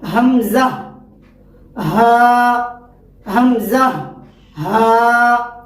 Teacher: حلق کا جو سینے کی طرف والا ہے، اس سے حمزہ اور ہا کی ادائیگی ہوتی ہے۔ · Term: اقصی حلق